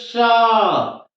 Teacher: तालव्य स का मतलब है कि इसका उच्चारण करें तो जीवा हमारे तालु में स्पर्श कर जाए, तो इसको बोलेंगे श।